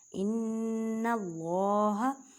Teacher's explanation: ان اللہ، نون مشدد گنہ کا مطلب ہے آواز کو ناک میں لے کے جانا ایک الف کی مقدار میں. اور اللہ کے لفظ کو موٹا پڑھیں کیونکہ اللہ کے لفظ سے پہلے زبر ہے.